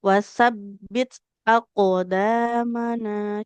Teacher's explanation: ada huruf qalqalah lebih tebal ibu karena qalqalahnya huruf qof